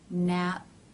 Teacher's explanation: The lips are together, cutting off the airflow. Nap, and they part, the air is released.